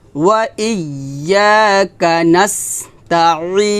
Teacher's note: আইনটা চাপ দিয়ে বলতে হবে গলার মাঝখান থেকে